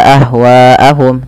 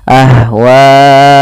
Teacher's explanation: hamzahnya pada pas satu kata maka dinamakan dengan mad wajib muttasil maka harus panjang WAnya empat harakat atau lima tidak boleh dua